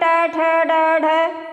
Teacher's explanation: जो जीभ की नोक होती है वो पलट के जाके मूर्धा को छूती है। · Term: उत्क्षिप्त व्यंजन